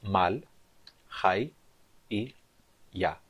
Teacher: A sílaba mal é uma sílaba fechada e átona com uma vogal curta.